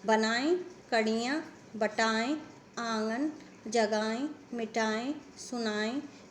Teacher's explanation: उनकी जो ध्वनि होती है, जो उच्चारण होता है वो हमारे नाक से होता है, जबकि अनुनासिक का उच्चारण जो है हमारे नाक से कम और मुंह से अधिक होता है, और उनके ऊपर जो है चंद्र बिंदु लगी होती है।